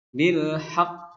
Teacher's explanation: Ada jeda baru memantul karena huruf yang terakhirnya bertasydid. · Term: Qalqalah